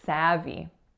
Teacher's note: savvy has 2 syllables and each of the vowels is tense. So that first vowel is a.